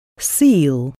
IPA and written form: siːl (seal)